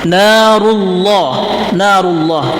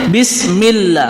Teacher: Ketika kita menemukan lafaz Allah diawali oleh fathah atau diawali oleh dhammah, maka lafzul jalalah ini dibaca tafhim, dibaca tebal. Narullah, narullah tebal.